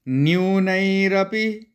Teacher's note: न को न यू नहीं बोलना। न्यू न को जल्दी बोल के यू पे चले जाना है।